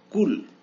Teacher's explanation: এই কাফকে জিহ্বার একেবারে শেষের অংশ থেকে উচ্চারণ করতে হয়